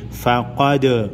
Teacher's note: فَإِن كَذَّبُوكَ فَقَدْ قاف حروف مستعلیہ میں سے ہے، موٹا پڑھیں گے۔ دال حروف قلقلہ میں سے ہے، دال کو ہلا کر پڑھیں گے۔